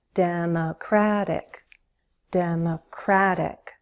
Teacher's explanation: Primary stress is on the third syllable.